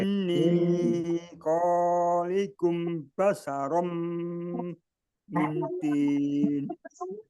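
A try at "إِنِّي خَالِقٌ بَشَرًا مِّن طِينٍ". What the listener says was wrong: Ya, kurang panjang. Inni khalikum.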